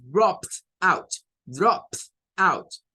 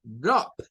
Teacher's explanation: Entonces, por eso se pone otra P y luego se agrega el id, pero la pronunciación, recuerden que de esta es como una t, porque el sonido final es de una P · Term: sonido de T